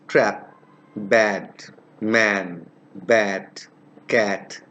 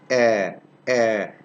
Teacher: This is pronounced with the lips half open and unrounded. Half open. The position of the lips is half open. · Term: short vowel